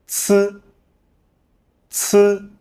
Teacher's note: When pronouncing this sound, the tip of the tongue presses against the back of the upper front teeth, obstructing the airflow. This allows a weaker stream of air to squeeze through the gap, creating sound through friction.